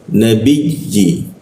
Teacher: ketika ya dibaca itu ditahan itu rongga udara terkunci sehingga hembusan udara tidak ada. Jadi agak sedikit berat bacanya. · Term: huruf ya bertasdid